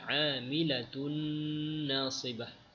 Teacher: Tanwin bertemu dengan nun terus masuk dengan adanya dengung. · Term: idgham bi ghunnah